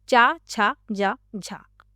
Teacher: जिन व्यंजनों का स्पर्श स्पर्श का समय अधिक रहता है और अंत में हवा संघर्षी हो जाती है। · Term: स्पर्श संघर्षी व्यंजन